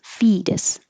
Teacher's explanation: the T changes to a d and the o e is really just e